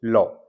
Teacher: इसमें क्या होता है, हवा जीभ के बगल से निकलती है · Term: पार्श्विक